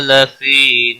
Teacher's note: لفی یا مدہ ہے ایک الف کے برابر کھینچ کر پڑھیں گے